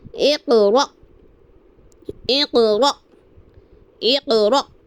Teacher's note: جب حمزہ ساکن ہو یعنی حمزہ ساکن ہو تو ہمیں حمزہ ساکن کو ہمیشہ جھٹکا دے کر پڑھنا ہے, جس طرح میں پڑھ رہی ہوں.